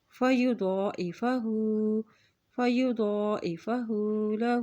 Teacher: یہاں دیکھیں دو کے اوپر کھڑی زبر ہے تو اس کو ایک حرکت لمبا ادا کریں گے. ہا کے اوپر الٹا پیش ہے تو اس کو بھی ایک حرکت لمبا ادا کریں گے